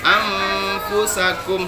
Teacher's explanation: nun mati jumpa fa itu samar-samar, maka fa-nya gigi atas bertemu dengan fa, bersiap-siap mengucapkan makhraj huruf fa. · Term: ikhfa